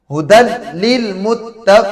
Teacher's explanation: تنوین کے بعد لام آ گیا، ہم نے پڑھا کہ لام میں بغیر غنہ کے ہوگا، بلا غنہ کے۔